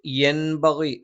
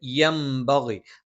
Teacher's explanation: സുക്കൂനുള്ള നൂനിന് ശേഷം ബ വന്നാൽ അവിടെ നൂനിന് നമ്മൾ മീമാക്കി മറിച്ച് മണിക്കും. അതാണ് ഇവിടെ ഒരു മീമ് ഒരു പ്രത്യേക ഒരു അടയാളം പോലെ ഇട്ടിരിക്കുന്നത്. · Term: ഇഖ്ലാബ്